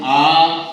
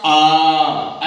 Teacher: दीर्घ का दो मात्रा में आ, और प्लुत का आ